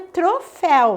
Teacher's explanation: a palavra troféu termina com ditongo aberto e ela é uma oxítona